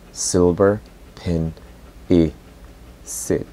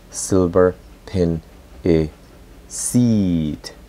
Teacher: Por ejemplo, pronuncio silver pen e sit. Si yo digo silver pen e seat, ya no estoy estableciendo la conexión porque la I fue prolongada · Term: La I corta